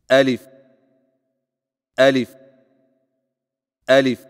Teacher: الف کی ادائیگی میں آ کو بغیر کھینچے، لی کو فا کے ساتھ فوراً ملائیں